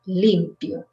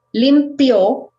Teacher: if you put the accent in the end, it sounds like the verb limpiar in past. So when you say limpio, it means he cleaned or she cleaned.